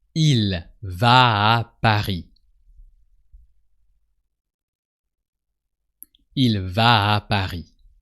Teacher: the va and the a sound like one word, like a long a. Va. So a long a, but with a heavier end.